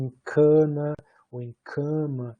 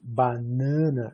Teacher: Você tem mesmo uma assimilação de nasalização